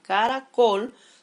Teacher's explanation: Las palabras se clasifican en agudas, llevan su sílaba tónica en el último lugar, como por ejemplo en este caso la palabra caracol, su mayor fuerza de voz está en la última sílaba